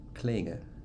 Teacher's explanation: You're absolutely saying a velar nasal.